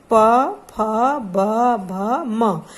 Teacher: इसमें देखिए हमारे दोनों होंठ एक दूसरे को स्पर्श कर रहे हैं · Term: पवर्ग